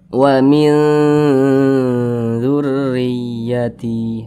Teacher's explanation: Huruf dzal termasuk kepada huruf ikhfa hakiki, tergolong kepada ikhfa hakiki ausat. Jadi cara bacanya disamarkan dan juga didengungkan.